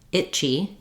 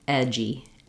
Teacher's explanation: And we'll have, again, for edgy, vowel eh in the first syllable, and G starts our second syllable. So here it's voiceless chi, itchy. Here voiced G, edgy. So we just link together edgy.